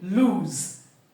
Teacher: And when pronouncing the word lose, the vocal cords must vibrate towards the end because the sound is l, oo, z. When you say z, you can feel the vibration of the vocal cords.